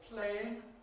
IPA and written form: ˈpleɪɪŋ (playing)